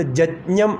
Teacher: അതുപോലെ ശുക്ലയജുർവേദത്തെയും കൃഷ്ണയജുർവേദത്തെയും സംബന്ധിച്ച് പറയുമ്പോൾ, ശുക്ലയജുർവേദത്തിൽ യകാരം പദത്തിൻ്റെ ആദിയിൽ വരികയാണെങ്കിൽ, യകാരം പദത്തിൻ്റെ ആദിയിൽ വരികയാണെങ്കിൽ ജകാരമായിട്ട് ഉച്ചരിക്കും. നമ്മൾ സാധാരണ യജ്ഞം എന്നാണ് പറയുക.